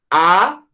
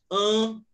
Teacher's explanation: A não é nasal, mas an é nasal. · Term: som nasal